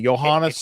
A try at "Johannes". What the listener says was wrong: It's Johannes. It's a soft J.